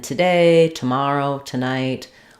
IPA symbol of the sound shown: tə